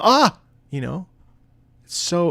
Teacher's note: that beautiful open ah vowel, it's such a powerful sort of shouted ah. When you scream ah, it's not ooh, it's not eh, it's not e, it's ah.